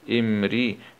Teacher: راء كسرة مع الترقيق